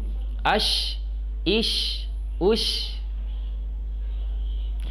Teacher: Kemudian dia nanti memiliki sifat yang hanya dimiliki oleh huruf shin, yaitu tafashi. Tafashi itu angin menyebar, udara menyebar.